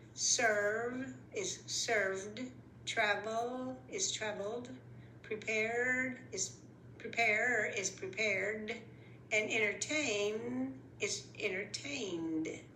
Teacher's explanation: The ones where ED sounds like a D are the ones that vibrate or use the vocal cords at the end.